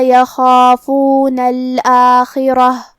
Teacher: کلمت الآخرہ یہاں را پہ زبر ہے، تو ہم را کو تفخیم سے مطلب بھاری آواز میں پڑھیں گے